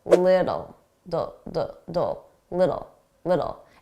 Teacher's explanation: to drop them and it will sound like little little or a native speaker will pronounce them as D's a very soft D because they're between two vowels